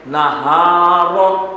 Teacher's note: نہارو میں ہا کو سینے سے ادا کریں گے اور را کو پر پڑھیں گے